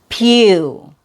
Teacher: you open your mouth, it's a strong syllable, and it has a long U sound